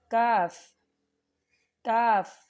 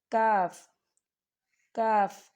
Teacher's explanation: زبان کے پچھلے حصے کو اٹھا کر تالو کے سخت حصے سے ٹچ کرنا ہے